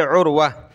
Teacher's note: گولتا پر جب وقف کریں گے تو گولتا ہا بن جائے گی